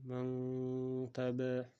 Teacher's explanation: Yaʼni bu yashirish, mahrajga yashirish, gʻinna qilish nima deganda endi bu qoidani murokkabligi shundaki, bu sukunli nun va tanvindan keyin bu 15 ta harfni biri kelsa sukunli nunni shu harflarni mahrajiga yashirib, g'unna bilan ihfo qilinadi